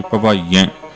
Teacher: ਬਹੁਵਚਨੀ ਕਿਰਿਆ ਨੂੰ ਨਾਸਕੀ ਉਚਾਰਨ ਦੇਵਾਂਗੇ